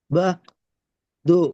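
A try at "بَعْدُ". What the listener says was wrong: பஹ் அல்ல, பா. ஐன் வரணும். பா. பா. பா. ஐன் உச்சரிவாங்க. பா. து. லு அல்ல, து. து. இங்கதான் து சவுண்ட் வரணும். து. பா. து. பஹ் அல்ல, பஹ் அல்ல, பா.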